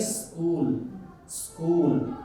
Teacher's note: इसको हम जब भी बोलना होगा तो दंत सकार में आएगा, इसीलिए हम कहेंगे स्कूल, स्कूल, ये दंत से टकराएगा।